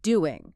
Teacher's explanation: doing often drops the final g sound in informal speech becoming doing.